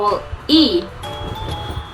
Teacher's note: my lips uh is not round so the sound e is unrounded